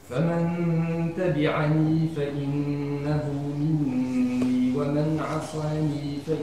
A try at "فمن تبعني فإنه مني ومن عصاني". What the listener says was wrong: الآن عصاني جاءت أمام القبل كأنها حرف سين، وكذلك إخلاص الضم. كل حرف مضموم يجب أن يضم بشكل جيد.